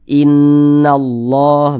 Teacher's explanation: Lafaz Allah sebelumnya tanda baca fathah, maka dibaca tebal.